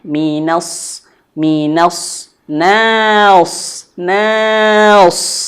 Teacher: di sini nunnya tipis, mina, sodnya tebal.